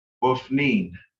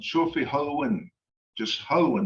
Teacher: it has to be pronounced with a long E sound, and there has to be an N on the end of it